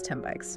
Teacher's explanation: an M sound completely replaces the N sound. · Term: assimilation